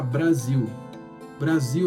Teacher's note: Primeiro que o S, que inicialmente, né, a letra S tem esse som de S, né? Só que na palavra Brasil, ela vira um Z, ela fica vocalizada, né? Tem a vibração da garganta acompanhando esse S